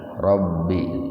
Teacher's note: Ba-nya itu ditasdid, Rabbi ditahan.